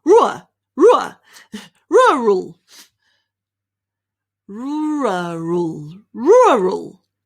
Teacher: so it's sort of like there's a little R behind the ru.